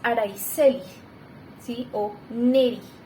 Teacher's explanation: Entonces ahí se fuerza un poquito que la S ya no es un poco fricativa, sino que está con un poquito más de fuerza